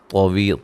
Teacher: طا کو موٹا ادا کریں گے، وی یا مدہ ہے، لا ٹھیک ہے، طوی لا وقفاً ایسے پڑھا جائے گا۔